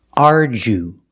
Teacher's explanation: the DU makes the J sound like jump and Juice arju we use a long oo like food and boot ooh